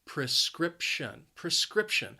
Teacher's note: the word has three syllables and the stress is on that second syllable